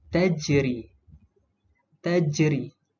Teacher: Sebab apa? Sebab huruf jim ni berada di tengah kalimah. Okey, dan dibaca dengan detakan yang perlahan. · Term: qalqalah sughra